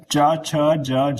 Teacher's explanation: तालु की बात करें यानी तालव्य से जो च वर्ग है उसका उच्चारण होता है।